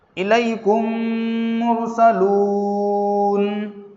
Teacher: ہم آخر حرف پر نون پر جزم لگا کر سانس توڑ دیں گے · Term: وقف